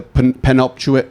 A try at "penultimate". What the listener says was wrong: think you put a C in it. You threw a C in there.